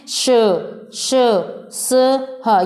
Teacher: श तालव्य, श मूर्धन्य, स वर्तस्य और ह स्वर तंत्री है